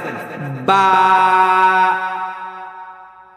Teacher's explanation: সবাই বলেন বা, হয় নাই। 2টা ঠোঁটকে একসাথে মিলান, মিলাইয়া ঠাস করে ছাইড়া দেন, বা। ওকে, তা ছেড়ে দেন।